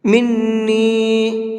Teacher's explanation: یہ چھوٹا مد ہے، اس کو 1 سے 3 الف کے برابر کھینچ کر کے پڑھیں گے